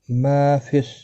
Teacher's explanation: للہ ما فی السماوات، للہ اللہ کا لام زیر کی وجہ سے باریک پڑا جائے گا، اس کے اوپر کھڑی زبر بھی ہے، ایک الف کے مقدار کے برابر کھینچ کر پڑھیں گے۔ ما فی ما الف مدہ ہے، ایک الف کے برابر کھینچ کر پڑھیں گے۔ فی السماوات، میم اور واو دونوں کے اوپر کھڑی حرکات ہے، کھڑی زبر ایک ایک الف کی مقدار کے برابر کھینچ کر پڑھیں گے، تی کو کھینچنا نہیں۔